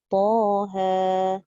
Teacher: Ta ejaannya ta alif, ha ejaannya ha alif. Jadi bacaannya 4 harakat. 2 ta, 2 ha. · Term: mad tabi'i harfi